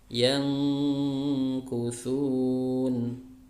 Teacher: nun sukun ketemu kaf, nunnya menjadi samar, tidak dibaca jelas yan, tapi yang samar karena seakan-akan dia ingin diidghamkan atau ingin dileburkan ke huruf kaf setelahnya ya. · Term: ikhfa